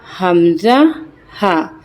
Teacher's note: ये अदा होते हैं अक्साउल हलक से, यानी कि जो सीने की तरफ वाला हिस्सा होता है। ये देखें, जो सबसे नीचे होता है ना, वहाँ से ये निकलता है हमजा, हा।